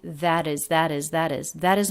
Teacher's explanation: these two words linked with a flap t